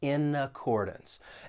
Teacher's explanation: Now, when you pronounce this phrase, of course, we can link those first two words. We can link that consonant N in in with the vowel sound in accordance